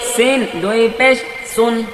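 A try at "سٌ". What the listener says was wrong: এটা কিন্তু মিশিয়ে দেওয়া যাবে না। সিন দুই পেশ সুন বলা যাবে না। সিন দুই পেশ সুন, এটা ভেঙে ভেঙে সুন্দর করে পড়তে হবে, স্পষ্ট করে। সিন দুই পেশ সুন। একটু কষ্ট হতে পারে, তবে এটা ধীরে ধীরে পড়ে স্পষ্ট ক্লিয়ার করতে হবে।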